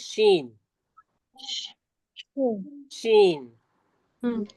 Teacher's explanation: जी, देखिए शीन जबान के बीच और उसके मुकाबिल, मतलब जो जबान के बीच का हिस्सा होता है उसको हम ऊपर के तालू से लगाते हैं तो शीन अदा होता है।